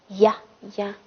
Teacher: 发音部位是舌面中